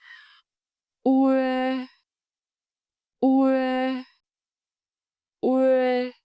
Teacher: Start with round lips for u, then slide into a spread smile for e. ue ue ue And the tone s raising pitch again, sharp and clear. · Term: Vowel cluster ue